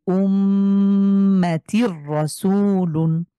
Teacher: তানভীনের পরে র তাহলে আমরা তানভীন কে র এর সাথে ধরবো